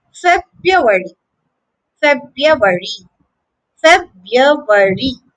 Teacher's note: To say it correctly, you have to say ruari, ruari, ruari, February, February. The American version is much easier. The first R is silent.